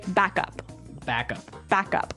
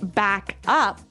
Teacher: both words are stressed at about the same level